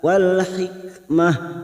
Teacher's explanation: Kitaba wal hikmah wal alif lam qamariyah wal hikmah kaf sukun hikmah tak marbuto yang dibaca waqaf maka kita baca ha wal hikmah. Karena kita waqaf di sini maka tak marbuto kita baca ha